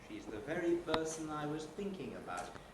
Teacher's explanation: That is a high head beginning with the first syllable of very, and a high fall on the first syllable of thinking. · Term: high head and high fall